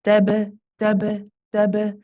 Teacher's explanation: Ba again is another one of the qalqala letters, the bouncy letters. So the way that we saw iqatatalu, iqatatalu, that bounce, we do the same with the ba.